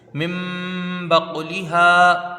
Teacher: ہاں میں الف مدہ ہے، ایک الف کی مقدار کھینچ کے پڑھیں گے